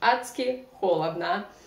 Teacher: combination of d and s in Russian, very often we pronounce like ц, адски холодно, not адски, but адски.